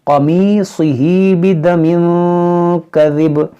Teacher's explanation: یہاں پر دیکھیں قاف حروف مشتعلیہ ہے، صاد حروف مشتعلیہ ہے، دونوں کو موٹا کریں گے۔